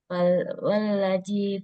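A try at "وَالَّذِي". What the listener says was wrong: Zal. Za keluarkan lidahnya. Wallazi. Wallazi. Itu nggak keluar tuh lidahnya, makanya jadinya bunyinya wallazi. Wallazi.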